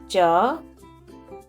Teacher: When you speak cha, you should feel the tongue is touching the hard palate of the mouth and the air is stopped inside the mouth. So there is no ha sound.